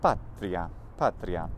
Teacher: So we can, if we divide it that way, then pat is a long syllable, and then the ri, a, those are two short syllables.